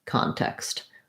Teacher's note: my con syllable has that clear vowel and that length and then my text syllable is short and unstressed so it does have the same pronunciation as the word text · I like to write it as AH sometimes, helps people think about the ah, the open, unrounded back vowel. And my con syllable has that clear vowel and that length. And then my text syllable is short and unstressed. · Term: first syllable stress